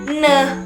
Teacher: termasuk ke bunyi nasal yang ketika menyebutkan ee kata itu mengeluarkan udara dari rongga hidung